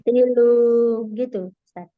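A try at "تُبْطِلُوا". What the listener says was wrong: Nah, ya, itu kurang panjang. Tubatilu lu. ukurannya 2 harakat. Tubatilu. Tubatilu. Tapi sudah saya ingatkan ya, kurang panjang seperti itu.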